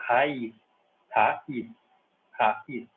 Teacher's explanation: Raiz é acentuada porque tem o hiato ali, né? Ra, o A está numa sílaba, e o I está na outra.